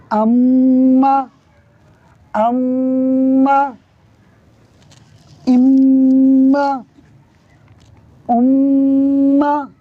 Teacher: ناک میں ایک الف کے برابر آواز کو لے جانا ہے. غننے کا مطلب بھی یہ ہوتا ہے ناک میں ایک الف کے برابر آواز کو لے جا کر پڑھنا.